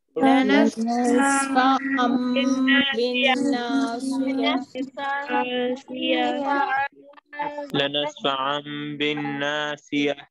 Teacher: And because there's a ba here following the tanween. Okay, so we transform the quality of tanween into a mim sound